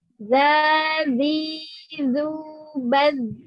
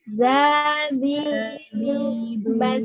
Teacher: za ini nggak boleh keluar udara. Dia bukan hamas